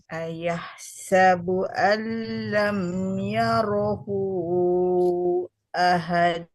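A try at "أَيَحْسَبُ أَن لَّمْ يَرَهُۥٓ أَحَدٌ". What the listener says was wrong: Pantulannya, pantulannya kenapa ditahan lagi? Ahad, ahad.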